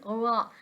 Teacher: यह जुबान की नोक बिल्कुल जो दांतों के साथ है ना जुबान की नोक वहां से और मुकाबिल के तालु यानी बिल्कुल जो उसका ऊपर वाला हिस्सा है वहां से अदा होता है।